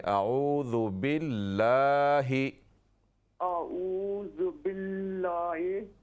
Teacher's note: ये लफ्ज़ अल्लाह के लाम पर ये खड़ी ज़बर है ना जी, इसको अलिफ की तरह लंबा करें